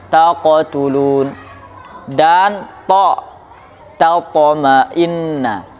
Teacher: qalqalah condong kepada fathah pada huruf qaf ini